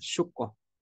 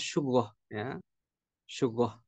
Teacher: Jadi qofnya itu diganti gin nanti lahjah ya